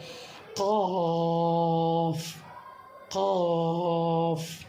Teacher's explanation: جب زبان تالو کو اٹھائیں گے تو قاف ادا ہوا، یہ قاف بھی موٹا حروف ہے